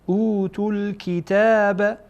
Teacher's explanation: اینجا تا در اینجا که ضمه داره پیش داره با لام وصل میشه. اوتوا الکتاب لا یا با عین وصل میشه.